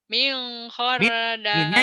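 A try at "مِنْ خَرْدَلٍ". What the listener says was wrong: idhar. Minnya jangan dimingkan. Minnya idhar. Karena nun mati ketemu ho. Yang ifa itu kalau ketemu huruf ifa.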